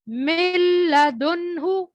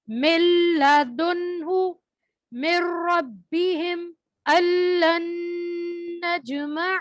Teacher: اب اسی طرح بغیر غننے کے ادغام جو ہوتا ہے نون ساکن اور تنوین کے بعد جب حرف لام اور رو میں سے کوئی حرف آتا ہے تو وہاں پر بھی بغیر غننے کے ادغام کریں گے اور نون کی آواز باقی نہیں رہے گی